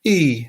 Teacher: e is a high level tone that's number one